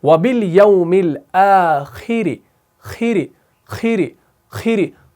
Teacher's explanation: خا کو موٹا پڑھنا ہے, را کو باریک پڑھنا ہے